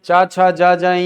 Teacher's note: च छ ज ञ सब तालु से